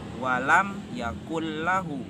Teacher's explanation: bertemu dengan dua huruf yaitu lamro contoh bacaannya walam Yakul lahu maka bacaannya tidak berdengung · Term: idgham bilagunnah